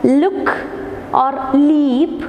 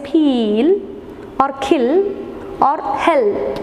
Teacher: we can see the l is velarized the back of the tongue it is erased towards the soft